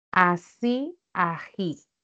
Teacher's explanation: La alveolar S es una fricativa y el fonema ja también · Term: fricativas